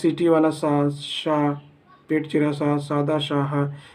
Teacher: जब आप सीटी वाला सा बोलते हो तो आपके अंदर घर्षण होती है। घर्षण मतलब गर्मी उत्पन्न होती है। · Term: उष्म व्यंजन